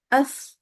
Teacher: Sifat pertama yang ditekankan kepada huruf sa adalah bahwa huruf sa selalu diiringi dengan dihembuskannya udara